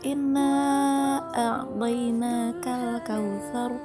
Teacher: lamnya dibaca jelas, yaitu al, tapi tidak qalqalah ya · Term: alif lam qamariyah